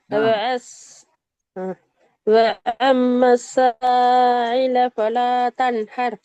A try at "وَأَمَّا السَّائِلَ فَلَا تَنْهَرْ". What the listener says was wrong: கொஞ்சம் ஐ மாறுது.